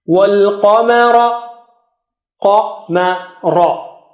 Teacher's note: ق is high, ra is thick